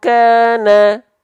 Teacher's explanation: Karena makhraj qaf dan kafnya sudah naik. Suara nggak bisa masuk ke rongga mulut karena udah ketutup sama makhraj qaf dan kaf sehingga melipirnya ke rongga hidung.